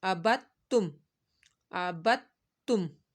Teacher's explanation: تو اکثر ایسے ہو جاتا ہے کہ با کو ہم نے کیا کرنا ہے، دال کے ساتھ نہیں بلکہ تشدید والے حرف کے ساتھ ملا کر پڑھنا ہے، تا کے ساتھ۔ دال کو ہم نے چھوڑ دینا ہے، لیکن ہجے کرتے ہوئے ہم نے دال کا بھی نام لینا ہے۔